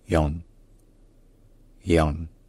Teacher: Young. Donc avec un son qui ressemble un peu au yan, au en français, mais qui est quand même plus centralisé, un peu plus relâché, et qui donne young. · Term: strut sound